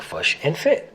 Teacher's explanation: the kit-foot vowels are reversed for the words fish and foot to sound like fush and fit